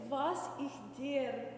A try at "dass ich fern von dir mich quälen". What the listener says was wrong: No, das ich fern von dir. Yes, dass ich fern von dir mich quälen. Elongate those vowels.